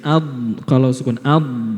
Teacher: Huruf dot itu nafasnya tertahan tetapi suaranya mengalir sedikit tadi.